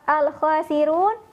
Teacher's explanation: run dibaca panjang, boleh 2, 4 atau di 6 harokat, yang kita kenal dengan istilah mad arid lis sukun.